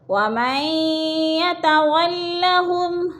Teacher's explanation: نون ساکن لکھنے میں آتا ہے، پڑھنے میں نہیں آتا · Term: ادغام